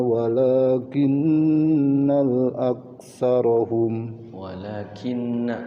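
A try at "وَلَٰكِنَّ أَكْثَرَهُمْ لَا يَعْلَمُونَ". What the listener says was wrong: bukan kinnal. Sekali lagi masih kepanjangan naknya. Langsung.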